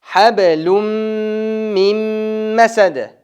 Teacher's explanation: Bu yerdan dag'i nun tamg'asi mimga kiritildi, idg'om bo'ldi, o'shanda nun o'qilmay qoladi.